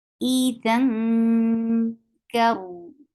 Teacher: You are not saying tanween at all. You are going towards the makhraj of kaf, and you're keeping sound in your nose. This is all about ikhfa. · Then there is ikhfa. You're hiding the sound of tanween because kaf is among the letters which applies ikhfa. Mm, Idhan, and you're keeping the sound in your nose.